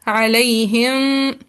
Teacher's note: जब हम इख्फा शफवी करेंगे तो पेपर जितना हल्का सा गैप होगा, यानी कि होंठों को बिल्कुल सख्ती से नहीं मिलाएंगे।